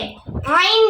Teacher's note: হলকের মধ্যখান হইতে আইন উচ্চারিত হয় হরফটি একটু সবল হবে বাতাস বন্ধ করে উচ্চারণ করতে হবে আইন হরফটি পাতলা হবে আইন